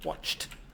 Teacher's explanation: But if you have a ch, it's quite a hard sound. It's not easy to do a ch followed by a d. So we do a t sound